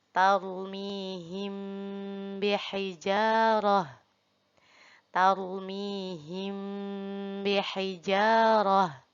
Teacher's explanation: Nah, ini mim mati bertemu huruf ba. Dinamakan dengan ikhfa syafawi. Nah, cara membacanya sama ditahan 3 harokat dan juga dengung.